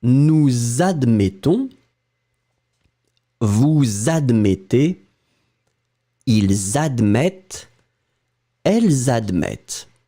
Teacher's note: And obviously, we'll make this liaison, so the link between the subject that ends, as you can see, with the S and the verb that starts with a vowel